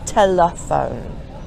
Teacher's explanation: The final E is silent. Now the middle E is where the schwa is. So the E, instead of being telephone, gets reduced down to an sound.